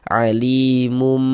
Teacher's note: Nih kita baca alimum kemudian kita dengungkan, kita ghunahkan sehingga di bagian mum di bagian situnya itu kita tahan saja nakak suaranya kita dengungkan, kita gunahkan kira-kira sepanjang dua harakat